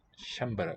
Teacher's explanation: all short vowels in sanskrit shambhala with a palatal sha and a cluster here the nasal is written with the anuswara the dot above